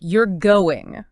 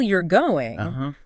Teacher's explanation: with a rising intonation, becomes a question